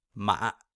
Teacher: you're almost kind of like stopping the sound in your throat a little bit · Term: third tone